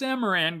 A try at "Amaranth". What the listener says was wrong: You said Amaran, not Amaranth.